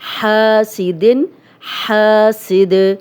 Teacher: حاسدن، تو یہ 2 زیر ہیں اس لیے یہاں پہ جزم لگے گی۔ حاسد سد، اب دال پہ جب بھی جزم لگتی ہے تو ہلا کے پڑھتے ہیں، کلکلا والا حرف ہے۔